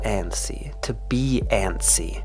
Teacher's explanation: Notice here that we don't really pronounce the t.